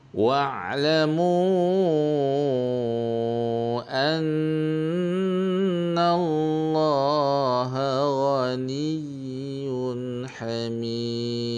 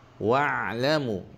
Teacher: Wa'lamu, bukan wa', ya wa'. Ain ada tawassut dan berjalan suara sikit. Lamu mat jaiz 4 harakat.